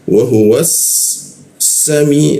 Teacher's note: dua gigi dirapatkan lidahnya itu posisinya di belakang gigi di bagian bawah